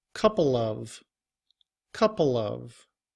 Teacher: we do not drop the V sound when the following word begins with a vowel. However, there is still a change in that we're not saying but we're using the schwa sound, which is more of a However, when combined with couple, we say it quickly all together.